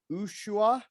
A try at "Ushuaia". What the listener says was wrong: It's Ushuaia. Actually, down here they don't say the H. It's Ushuaia.